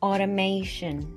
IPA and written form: ˌɑː.t̬əˈmeɪ.ʃən (automation)